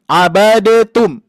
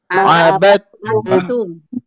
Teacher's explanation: Ini ya, idgham, mutamasilain, dan cara bacanya akmal paling sempurna adalah menghilangkan bunyi huruf dal